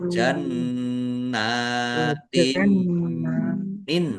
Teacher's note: Ingat mim tasdid dan nun tasdid itu dibaca ghunah dibaca mendengung ditekan ditahan biar tampak mendengung. · Kasrah tanwin bertemu dengan huruf mim. Bacaan idgham ghunah masuk dengan mendengung. Mendengung mim ditandai mimnya ada tasdidnya di tahan biar tampak mendengung.